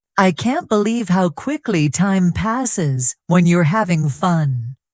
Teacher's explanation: Notice the stress on can't believe quickly fun. These are the words that carry the meaning.